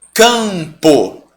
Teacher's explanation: eu estou falando A, só que agora no nariz. Eu não acrescentei nenhum som aqui.